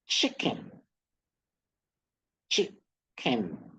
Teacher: the chick is stressed, kin low pitch